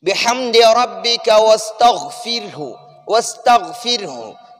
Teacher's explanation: ادھر را ساکن ہے اور اس سے پہلے والے حرف پر زیر ہے تو ہم اس را کو باریک پڑھیں گے